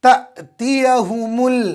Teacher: حمزہ کے اوپر جزم آئے تو حمزہ کو جھٹکے کے ساتھ پڑھیں گے۔ نورانی قاعدہ میں ہم نے پڑھا تھا کہ حمزہ پر جزم آئے تو حمزہ کو جھٹکے کے ساتھ پڑھیں گے۔